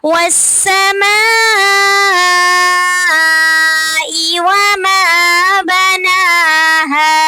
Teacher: والسماء وما بناها، والسماء پہ مد متصل بڑی مد ہو رہی ہے، اس کو ہم نے 6 الف کے برابر لمبا کرنا ہے۔